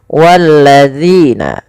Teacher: Dan panjangkan zi sepanjang 2 harakat karena ia ada bacaan mad tabi'i.